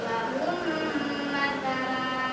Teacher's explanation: Memasuk, nah berarti dimasukkan mim yang pertama ke mim yang kedua, atau kita biasa kenalnya dengan bitasydid. Jadi gak dibaca 2 mimnya, tapi 1. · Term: idgham mimi, idgham